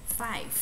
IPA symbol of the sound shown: f